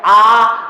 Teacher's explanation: आ कहने में मुंह सबसे ज्यादा खुलता है, तो आ विवृत्त है।